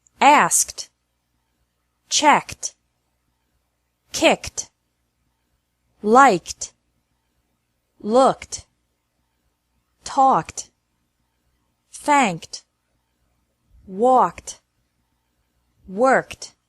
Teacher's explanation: Ed is pronounced like T after verbs ending with a K sound.